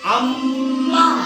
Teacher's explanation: म्हणजे याचा अर्थ या शब्दाचा उच्चार कसा होतोय नाकामधून होतोय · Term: अनुस्वार